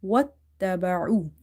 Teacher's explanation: So I have directly joined waw with the ta. Whatever was in between, I have just simply ignored it. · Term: shadda